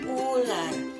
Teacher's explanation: di dalam bahasa Banjar imbah ini bakal yang ketiga ada UU berada di belakang dengan nada tinggi dan bentuk mulut bundar tuh contohnya di dalam bahasa Indonesia ada ular didalam bahasa Banjar